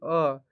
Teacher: जीभ के बीच से आपको आवाज निकल रहा होगा, इसका मतलब है कि इसको कौन स्वर बोलेंगे, तो मध्य स्वर बोलेंगे।